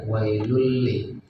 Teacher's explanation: Walaupun ini hukum nun mati dan tanwin, tapi tidak terdengar suara nunnya karena dilebur masuk ke huruf setelahnya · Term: idgham bila guna